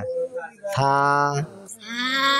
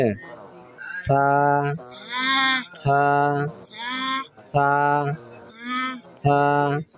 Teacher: এই যে হা করো জিব্বার আগা বাইর করো জিব্বার আগা এইটা জিব্বার আগা সামনে উপরে দুই দাঁতের আগার সঙ্গে লাগে